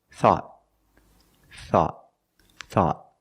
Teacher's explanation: At the end, the tongue goes up and makes a stop t.